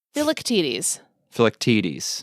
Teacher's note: Emphasis on the third syllable.